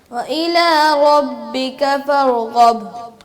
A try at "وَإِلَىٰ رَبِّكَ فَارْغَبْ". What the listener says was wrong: را کو ہلائیں مت. فرغب. با پہ قلقلہ نہیں کیا، کیجئے. فرغب.